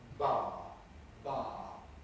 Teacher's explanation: the voicing may go all the way through